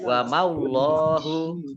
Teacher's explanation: Wa maullahu. Nah, ini mim fathah alif dibaca pendek karena langsung masuk ke huruf berikutnya yaitu Allah. Ya, ada ditandai dengan ada tasdid.